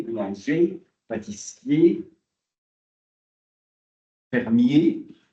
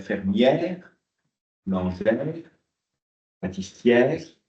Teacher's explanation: Auquel s'ajoute le boulanger, boulangère, boucher, pâtissière. C'est un et au masculin, et fermé, boulanger, pâtissier, fermier, et ça devient un et ouvert